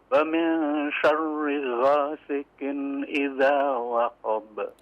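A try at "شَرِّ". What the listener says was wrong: Afwan Pak, diperhatikan huruf ra-nya ya. Syarri, syarri jangan ditebalkan ya sehingga suaranya terdengar tebal. Syarri enggak, tapi syarri, syarri. Ya, tipis Ya, ra-nya tipis saja.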